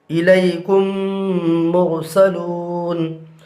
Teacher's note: یہاں پر میم ساکن کے بعد میم ہے، لہٰذا یہاں پر ادغام ہوگا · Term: ادغام شفوی